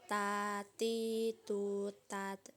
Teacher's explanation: cara melafalkan huruf ta dengan menyentuhkan ujung lidah dengan gusi gigi seri bagian atas dengan mengalirkan sedikit nafas perhatikan tatitut that perhatikan ada udara yang mengalir ketika kita melafalkan